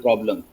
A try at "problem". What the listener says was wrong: O जो है, it doesn't come out